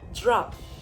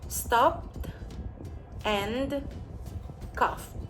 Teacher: If the verb base ends in a voiceless sound, then the ed in the end of a verb sounds like a T. The T is blended together with the previous consonant, and it is not pronounced as an extra syllable. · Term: group T